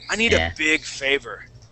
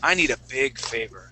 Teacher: you see how I slow down on big? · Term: stress big